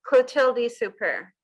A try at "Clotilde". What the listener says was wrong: Yeah, so the TH isn't th as in normal, it's Clotilde.